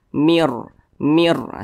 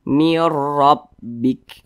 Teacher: jadi nun sukun berjumpa dengan huruf ro hukumnya adalah Idam bilunah cara bacanya itu dengan cara memasukkan kemudian juga tidak berdengung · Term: Idam bila gunah